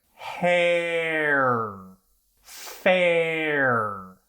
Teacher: if you slow these down they act like diphthongs